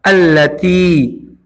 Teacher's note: تا کو کھینچنا ہوگا ایک الف کے برابر، زیر کے بعد جزم والا یا موجود ہے، یا مدہ، اللتی پڑھیں گے۔